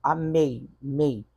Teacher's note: O E vem na frente do I. O E é vogal e o I é semivogal. Logo, eu vou ter um ditongo agora chamado ditongo decrescente.